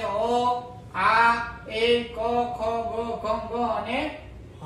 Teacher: ગળામાંથી નીકળે એટલા માટે એને શું કીધું, એનું સ્થાન શું આપ્યું, કંઠ્ય